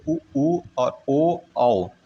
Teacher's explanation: वृत्तमुखी यानी कि गोल, जिनको बोलने में आपका ओठ जो है वो गोल हो जाता है, जैसे उ और ओ औ, ये वृत्तमुखी हैं।